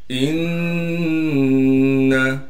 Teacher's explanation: इन्ना हमज़ा को नून से मिलाएंगे इसलिए कि नून पर तशदीद है और नून जो हर्फ है इस पर अगर तशदीद आ जाए तो फिर इस पर गुन्ना यानी नाक में आवाज़ को लेकर जाएंगे